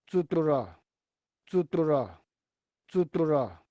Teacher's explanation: you'll hear the oscillations of the lips. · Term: pre-stop bilabial trill